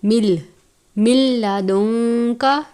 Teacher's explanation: ادغام کا قاعدہ لگتا ہے لیکن لام اور را پر غنہ نہیں کرتے. اس کو من نہیں پڑھنا بلکہ مل پڑھنا ہے. مل، من لدنک.